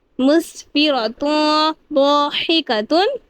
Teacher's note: یہاں پہ اخفا کی قواعد لگ رہی ہے، یہاں پہ بھی ایک الف کی مقدار غنہ کریں گے